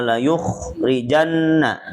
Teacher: janna ditahan gunah tiga harakat ya · kho-nya dibaca tebal dulu, ini tafkhim ya